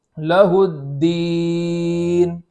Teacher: حرف مد کے بعد سکون عارض ہو تو وہاں مد عارض ہوتا ہے، تو یہاں ایک الف سے زائد کھینچ کر کے بھی ہم پڑھ سکتے ہیں